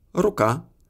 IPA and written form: ruˈka (рука)